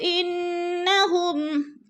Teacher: واللہ یشہد انہم، انہ کی نون مشدد ہے، غنہ کریں گے، سختی سے جمع کر پڑھیں گے